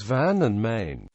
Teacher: the thick n sound after long vowels in words such as van and main.